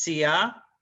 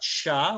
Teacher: Sia, not Shia, which is at the lower palate of your mouth. So it's sia, and it's 2 syllables, not sha, which is 1 syllable, and it's westernized.